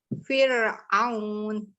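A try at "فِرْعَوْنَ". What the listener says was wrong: Tipis-tipis. Jadi catatannya huruf ro-nya hati-hati masih harus nyobain naikinnya dari dalam, bukan dari mulut gitu ya.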